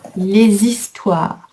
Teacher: Et les histoires, c'est un H muet, donc on fait la liaison.